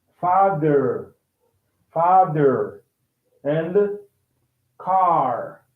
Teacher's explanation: r sound is not pronounced in british english